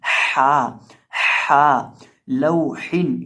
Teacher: तो हा का दुरुस्त तरीकाकार और दुरुस्त मखरज इसका ये है कि हम इसको हलक के बीच से अदा करते हैं